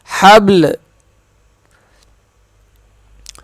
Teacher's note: آخر میں لام کی آواز آئے گی، با قلقلہ کریں گے با پر